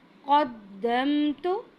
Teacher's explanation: قاف کو ہیوی کریں گے، دال پر قلقلہ کریں گے